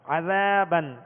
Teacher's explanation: عذابن, تو زال کو نرمی کے ساتھ پڑھیں گے, زال کے ساتھ الف مدہ ہے لہذا ایک الف کی مقدار کھینچ کر ادا کریں گے